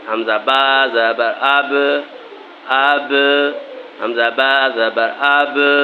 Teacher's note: جب بھی با ساکن ہوتا ہے تو اس کو کلکلا کرنا پڑتا ہے. کیسے کلکلا، یعنی جنبش پیدا کرنی پڑتی ہے، حروف میں جنبش دینی پڑتی ہے، یعنی حروف جو ہے وہ لوٹ کر اپنی طرف واپس آ جاتا ہے.